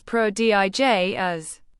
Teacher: The first syllable is a soft proo. The second is a stressed di-j like the start of digital and the last is as like the word us.